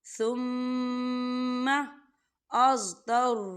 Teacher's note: میم مشدد ہے تو یہاں غنہ ہوگا